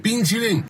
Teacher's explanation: he pronounces the consonant of qi like the English ch instead of the t sound in Mandarin.